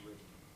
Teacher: it changes the nasal place of articulation to agree with the consonant that precedes it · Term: perseverative assimilation